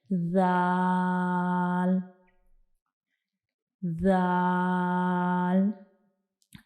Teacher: हमारी जुबान की जो नोक है उसका ऊपर वाला हिस्सा यानी ऊपर की तरफ उठेगा और जो हमारे ऊपर वाले सामने वाले दो दांत हैं उनके किनारों को टच करेगा। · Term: दाल का मखरज